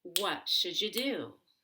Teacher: I want to stress what because it's a question word and do the verb, but the shuja is really fast and you becomes ya. And you can make a J between should and ya if you want to.